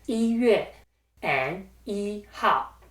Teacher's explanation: 一 is used as an ordinal number in these words, so 一 stays in the first tone.